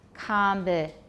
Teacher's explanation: So with a question, combinations, the tonic will be low and rising. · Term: yes-no question rise